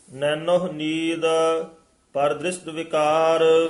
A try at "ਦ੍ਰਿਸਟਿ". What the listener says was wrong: ਦ੍ਰਿਸ਼ਟ ਸੱਸੇ ਨਾਲ ਹੀ ਦ੍ਰਿਸ਼ਟ ਸ਼ਸ਼ਾ ਨਹੀਂ ਬੋਲਣਾ